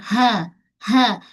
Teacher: Ha bulat pangkal kerongkong. Jangan shuha.